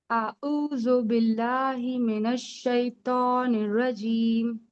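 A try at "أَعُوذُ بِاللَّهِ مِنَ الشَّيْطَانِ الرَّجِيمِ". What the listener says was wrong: देखिए, अलिफ की अदायगी नहीं हो रही है, उसमें अलिफ का साउंड आता है आ, फिर आता है आइन, आइन की अदायगी अऊज़ु, फिर जाल है अऊज़ु, आइन की अदायगी आ, आ। हाँ, पहले अलिफ निकलेगा फिर ऊ, अऊ, अऊज़ु, फिर जाल नरमी से अदा होगा, उसमें वहां ज की साउंड नहीं आएगा। जरा सी भी अगर हम सख्ती करेंगे ना तो ज का साउंड आ जाएगा अऊज़ु।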